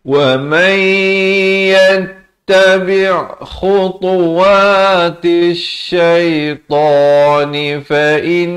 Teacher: Fa'in di sini wajibul gunnah, nun sabdu 2 harakat dengung.